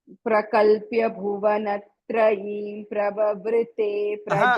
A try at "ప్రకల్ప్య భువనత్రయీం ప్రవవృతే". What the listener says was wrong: మకారం వినిపించట్లేదు నాకు. భువనత్రయీం అక్కడ పెదాలు ముయ్యాలి.